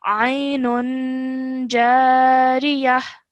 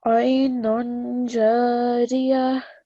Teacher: your light nasal sound is produced before you move on to the ja